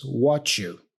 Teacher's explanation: Because here I have this combination. I have the T for what with the Y for you. This combination often sounds like ch. So that's why he says what you.